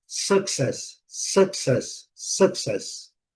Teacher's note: Com som do schwa. E a última sílaba forte.